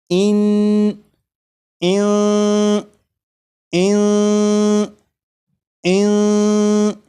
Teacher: نون ساکن کی جو آواز ہوگی وہ ناک میں چھپ جائے گی، اس طرح کی اس میں غنہ بھی ہوگا۔ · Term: اخفا